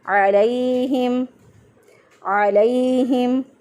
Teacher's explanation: लाम ज़बर या अलई को लंबा नहीं करना